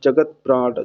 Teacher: जब आप उसका उच्चारण करते हैं तो आप देखते हैं, जब इसका आप उच्चारण करते हैं तो आप देखते हैं क्या, जगत प्राण जो ता होता है वो बहुत कम समय के लिए उच्चारित होता है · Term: आधा अक्षर